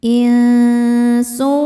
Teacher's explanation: Berikutnya ada hukum ikhfa hakiki awsat karena nun sukun bertemu huruf sin. Cara bacanya nun disamarkan ke sin disertai dengungan. Samar dan dengungannya sama besar.